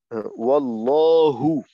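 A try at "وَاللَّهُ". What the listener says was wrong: আবার কিন্তু লা হয়ে গেল।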